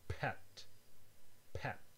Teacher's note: For example, if you're going to say the word pet, when you close your lips to say the P, the air is stopped and then it accumulates a little bit, so that when you finally release your lips, it comes out under pressure and then with a little explosion, as in pet, pet. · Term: stops